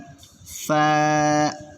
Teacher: নিচের ঠোঁটের পেট সামনের উপরের দুই দাঁতের আগার সঙ্গে লাগাইয়া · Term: 14 নাম্বার মাখরাজ